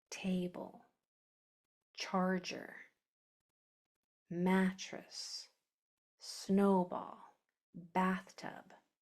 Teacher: So if you have a twocllable word, that first syllable is usually going to be accented